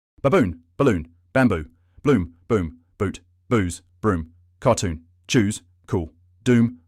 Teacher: to pronounce the double o sound in English first up is a long vowel sound where your lips make the shape of the letter O